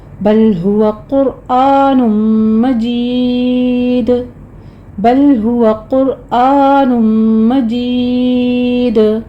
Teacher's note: یا مدہ کے بعد ہم وقف کریں گے تو دال پر قلقلہ ہوگا